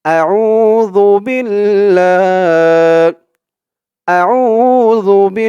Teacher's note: জালের উচ্চারণটা একদম নরম পাতলা হবে জিহ্বার মাথা উপরের দাঁতের মাথার সাথে লাগবে বিল্লাহ বা দিয়ে লাম ধরবে বা লামের বিল লাম খাড়া জবর